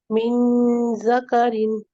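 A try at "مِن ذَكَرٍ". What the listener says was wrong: शाबाश, बारकल्लाहु फीक, बेहतर है।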